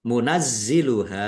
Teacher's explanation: zanya dibaca dobel ada tasdidnya ditekan dan ditahan biar tampak dobelnya. Munazziluha ha fathah alif mad thobi'i panjang dua harakat. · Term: dibaca double